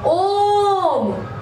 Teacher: प्लुत स्वर है, वहां हमें 3 गुना ज्यादा खींचना है